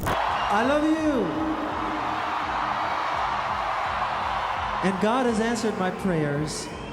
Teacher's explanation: Away from the soft, breathy tone people usually heard in interviews, could sometimes speak in a noticeably deeper, fuller register.